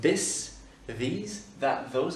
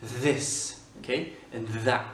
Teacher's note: Alors, c'est un TH qui est vocalique. Il faut que tu fasses avec tes cordes vocales.